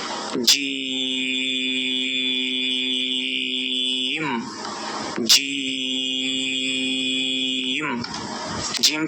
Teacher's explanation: এই জিমকে চার আলিফ পরিমাণ টেনে পড়তে হবে অর্থাৎ চার সেকেন্ড আপনাকে টেনে পড়তে হবে